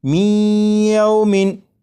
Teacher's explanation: یہ جو آواز ہے می ای، یہی ادغام ہو رہا ہے، اور ادغام اس طرح کہ نون ساکن کو یا میں شامل کر کے پڑھا جا رہا ہے